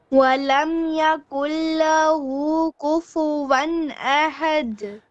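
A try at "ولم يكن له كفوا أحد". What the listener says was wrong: Again, kufu one. Wa fatha one, not kufu van. Va, not va. Kufu one ahad. Do you say kufu van or kufu one? Which one is correct? Kufu one. Wow fatha wa. Wa, not va. No V. There's no V in Arabic actually.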